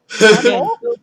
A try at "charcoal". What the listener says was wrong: You're the one that was saying you put the emphasis on the wrong syllable. It's charcoal.